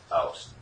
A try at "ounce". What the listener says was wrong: No T.